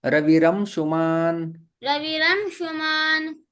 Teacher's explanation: रेप में परिवर्तित हो जाता है विसर्ग